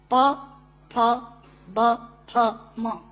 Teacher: प, फ, ब, फ, म दोनों होंठ मिलाकर बोले जा सकते हैं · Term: ओष्ठांग